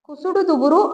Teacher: ஆறு வல்லின மெய்யெழுத்துக்களுடன் உகரம் சேர்ந்து வரும் பொழுது அந்த உகரம் அரை மாத்திரையாக குறைந்து ஒலிக்கும் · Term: குற்றியல் உகரம்